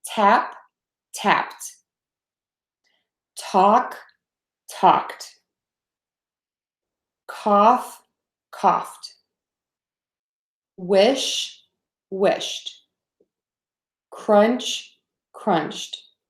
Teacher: there's nothing voicing there so then we're going to add a T